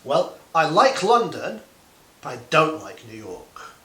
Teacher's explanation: usually when you're contrasting the first thing you are describing would have rising intonation and the second thing would have falling intonation